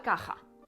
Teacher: se pronunciaba con la lengua mucho más cerca de la garganta. Era como la sh en inglés, la caja, la actual caja.